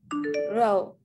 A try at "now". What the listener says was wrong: mình từ nãy giờ học âm ao mà sao lại cứ đọc là chữ o thế?